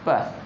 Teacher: जैसे ही हम प को बोलते हैं हमारे दोनों ओष्ठ आपस में क्या होते हैं, चिपकने लगते हैं, यानी इसका उच्चारण स्थान कहाँ हो जाता है, ओष्ठ।